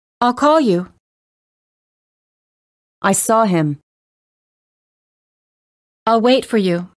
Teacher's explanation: notice how the verbs are stressed the most and how the surrounding words have been reduced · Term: stressed verbs